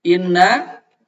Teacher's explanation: Itu hukumnya adalah wajib gunnah. Panjangnya 2 harkat. Ada yang bilang boleh sampai 3 harkat.